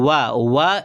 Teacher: व एक ऐसा वर्ण है जिसका उच्चारण दात और ओष्ठ से होता है। तो इसको दंतोष्ठ कहा जाता है।